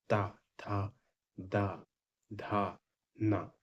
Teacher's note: जो आपकी जीभ है वो दांत को ऊपर रख जाती है दांत के बीच में ता था द धा ना ये हो